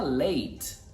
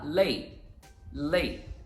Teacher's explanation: a gente vai usar o glottal stop e a gente faz essa pausa na emissão